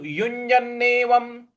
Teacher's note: व के ऊपर जो अनुस्वार है उसका म उच्चारण लाएंगे